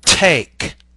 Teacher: More airflow than the D is pushed through the vocal tract when the T is produced. For example, take a small piece of paper, place it in front of your lips, and then say the word take.